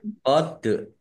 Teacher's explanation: Dal sukun bacaan qolqalah dibaca memantul ditampakkan pantulannya